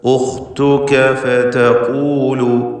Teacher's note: ഖാഫിന് തഫ്ഖീം കൊടുക്കുക, ഇസ്തിഅലാന്റെ ഹർഫ്